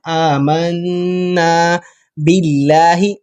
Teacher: قل آمنا نون پر شد ہے تو ہم نے گنہ کرنا ہے